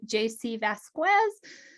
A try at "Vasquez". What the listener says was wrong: Pretty close. Vasquez. The U is silent.